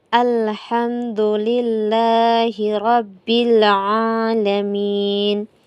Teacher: ain ini di tenggorokan bagian tengah. Kemudian kesalahan yang sering terjadi pada ee ayat yang kedua ini yaitu pada pelafazan ain ini yang sering dibaca ee yang diganti sebagai hamzah.